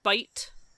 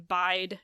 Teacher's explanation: Bite has that raised I, and bide has I.